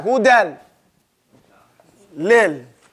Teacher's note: another point is that now there is no ghunna